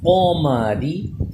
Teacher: پھر قوف کا مخرج ہے قوف زبر قو، میم زبر ما، قوم، را زیر ری، اس ری کو ہم باریک پڑھ رہے ہیں کیونکہ را کے نیچے زیر ہو تو باریک ہوتا ہے